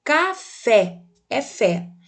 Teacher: Veja que a sílaba tônica da palavra é fé, café, é fé, devido ao acento presente, é o acento agudo.